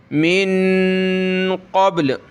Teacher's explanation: क़ाफ को गले से निकालें मोटा करके